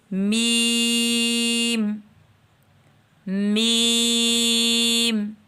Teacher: میم دونوں ہونٹوں کے خشک حصے کے ملنے سے ادا ہوتا ہے۔